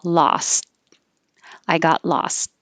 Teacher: if i'm just saying the word by itself i hold my tongue in the t position